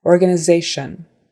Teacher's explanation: with a tion sounding like shun